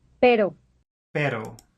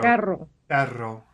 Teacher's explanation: The double R is a rapid trill of the tongue tip, and it can easily be learned only by careful imitation.